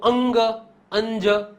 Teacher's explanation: નસિકા કોટર જે કહેવાય છે ત્યાંથી હવા નીકળે ને એ વ્યંજન બોલાય છે એના કારણે આ બધાને નસી અનુનાસિક કહેવામાં આવે એટલે કે નાકમાંથી